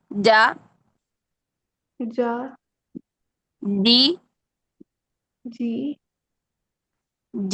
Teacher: जी है जी करके वो आगे आवाज फिसल जाती है जबकि जी में शिद्दत है आवाज सख्ती से बंद होगी